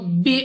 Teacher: با ہمارے پاس قلقلہ میں سے ہے تو جب ہم با کو ادا کریں گے تو ہمارے مخرج میں جنب سی ہوگی، یعنی ہمیں اپنی آواز واپس سنائی دے گی. نیکسٹ ہمارے پاس را پر زبر تو را کو پر یعنی موٹا پڑھنا ہے منہ اور آواز کو کھول کر.